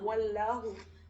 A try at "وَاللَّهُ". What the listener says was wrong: واللہ کو تھوڑا بھاری پڑھیں گے، واللہ.